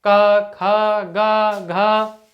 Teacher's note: जीभ आपके किसी भी मुख के अंग को स्पर्श नहीं कर रही है, जीभ स्वतंत्र है, तो उसको बोलेंगे कंठ से।